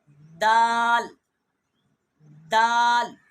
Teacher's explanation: اور اس کے بعد آ جاتا ہے دال، اور دال بھی زبان کی نوک ثناء اولیاء کے اندر والے جو مسوڑے ہیں ان کے ساتھ زبان لگے، جیسے دال دال، تو پھر یہ دال ادا ہوگا۔